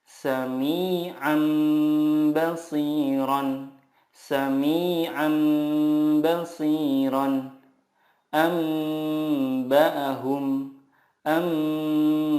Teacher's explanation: Iqlab adalah nun sukun atau tanwin bertemu dengan huruf ba. Cara membacanya, mengganti nun sukun dengan mim sukun dan disertai gunnah 2-3 harokat.